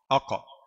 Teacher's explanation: Pangkal lidah, aqsal lisan, bertamu langit. Langit yang langit yang daging, yang lembut ya. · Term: Qaf